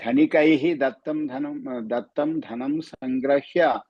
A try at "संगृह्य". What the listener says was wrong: संगृह्य ग्रह्य का ग्रह्य नहीं गृह्य